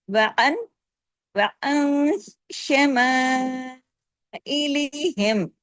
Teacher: اخفا کے ساتھ غنہ ہوگا سیکنڈ لیول کا، یعنی چھوٹا غنہ جس کا نام کاملہ ہے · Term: اخفا حقیقی